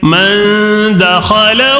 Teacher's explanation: الٹا پیش ہونے کی وجہ سے 1 الف کھینچ کر پڑھنا ہے